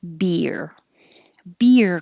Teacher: a little strange because it really is one syllable beer but your tongue is doing movement inside it's going very high for the e and then sliding down to make the r so it's almost two syllables if you slow down beer but